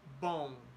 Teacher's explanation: the puff of air that comes out when the letter M is pronounced is divided between the mouth, which remains open, and your nose. So it is a nasal sound.